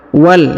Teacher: perhatikan huruf wa langsung sambung masuk ke huruf lam